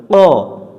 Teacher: কফ অক্ষর জিহব্বার গোড়া থেকে মোটা করে পড়তে হয় এটা জবরে আকার ছাড়া পড়তে হবে অর্থাৎ কফ জবর ক জিহ্বার